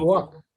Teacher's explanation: it changes to a rounded vowel in your area